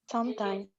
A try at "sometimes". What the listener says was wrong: You need to pronounce the M. Sometimes, sometimes, sometimes, sometimes. The M. No, no, sometime, sometime. No, it doesn't sound right. Pronunciation is sometimes.